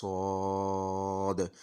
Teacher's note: ये जो दाल की आवाज़ है आखिर पे, इस पे हमने कलकला करने की कोशिश करनी है, हल्का सा कलकला करना है, यानी थोड़ा सा उछाल पैदा हो,